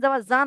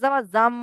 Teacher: এখানে নুন সাকিনটা এই মিমের দ্বারা পরিবর্তন নুন সাকিন থাকবে না মিম হয়ে যাবে